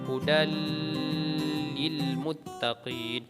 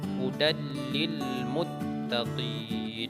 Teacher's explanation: Kita masukkan bunyi nun ke dalam bunyi la. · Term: idgham bila gunnah